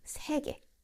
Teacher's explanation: In modern Korean, 예 sometimes sounds like 에. For example, when we are reading the word 세계, which means the word, it's spelled 세계, but often pronounced closer to 세계.